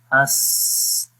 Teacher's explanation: حمزہ سین زبر اس، تو دیکھیں سانس جاری ہو رہا ہے اور آواز بھی جاری ہو رہی ہے مخرج میں